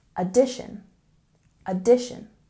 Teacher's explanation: Let's look at pronunciation for the word addition. We have a stress on the second syllable.